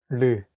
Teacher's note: It sounds like a mixture between an R and an L sound.